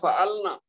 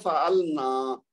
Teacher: نون کے اوپر جو ایک حرکت تھی اس کو اگر آپ نے دو کیا تو معنی بدل جائے گا